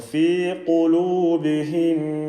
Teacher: you will make an additional sound called ghunna, a strong nasal sound from the nose